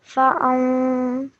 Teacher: it's a partial nasal sound. It's not an exact noon sound.